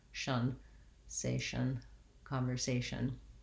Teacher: And then lastly, the last syllable of conversation is just our usual TION ending, the short and reduced shun, where I almost have no vowel. There is a little bit of a vowel schwa there, but I'm moving right from the SH to the M as quickly as possible.